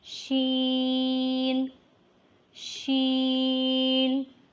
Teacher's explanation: it is pronounced when the middle of the tongue touches the top of the mouth roof